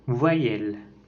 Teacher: La voyelle E est antérieure et mi-ouverte, étirée et orale.